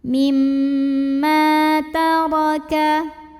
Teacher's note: Ra-nya dibaca secara tafkhim karena ra berbaris fathah, maka bacanya tebal, pangkal lidah naikkan.